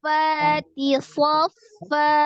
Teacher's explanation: Jadi berubah menjadi bacaan fathah 2 harokat. Jadi harokat fathah tanwin dirubah menjadi fathah dibaca 2 harokat.